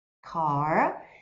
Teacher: esse R no final das palavras, principalmente no inglês americano, canadense e também em algumas partes da Irlanda, vai ser bem enrolado. Então, enrola essa língua nesses R's no final das palavras.